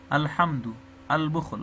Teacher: لامونه ټوله ښکاره ویل کېږي، یعنی اظهار ورباندې کېږي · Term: اظهار قمري